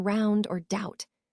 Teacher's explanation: starts with an I sound and glides into a U sound